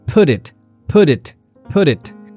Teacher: The t links to the next vowel and becomes d. It's called a flap t.